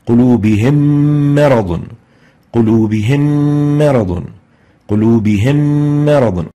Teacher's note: We realize that the ghunnah has been exaggerated due to the merger of the two memes together, and that's reflected by a shadda on the second meme and giving the second meme the color green.